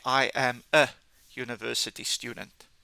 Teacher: although this word starts with a vowel, it's got a u sound like a yu